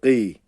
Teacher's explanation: değil Arkadaşlar bu g harfi değil yani ga harfi olduğu için küçük dilimizin olduğu bölgeyi kasarak sıkarak gıy diyoruz gıy ve harfi meden hareketsiz y olduğu için gı uzatıyoruz gı